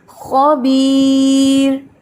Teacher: اور یہ را آپ کو پتہ ہے کہ یہ باریک ہے کیونکہ اس سے پہلے یا ساکن ہے